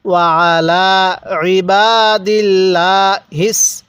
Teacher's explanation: সাথে পড়বেন আসসালামু আলাইনা এরপরে ওয়ালা ইবাদিল্লাহ ইবাদিল্লাহ পড়ে ঠিক আছে অনেকজনের লামটাকে মোটা করে পড়ে না এই জায়গার মধ্যে লামটা চিকন করে পড়তে হবে